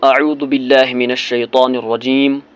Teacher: جس طرح میں پڑھتا ہوں اعوذ باللہ من الشیطان الرجیم، رجیم اور میم زیر می پر میں نے وقف کیا تو میم کی زیر میں نہیں پڑھوں گا، بلکہ میم کو ساکن کروں گا